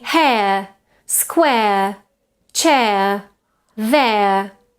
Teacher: The second centering diphthong is air. It starts with an air quality, again, open air, and then goes towards a schwa